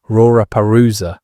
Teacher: Japanese speakers would typically transform the initial L sounds into something closer to R sounds, creating pronunciations like Rora peruza instead of laooa.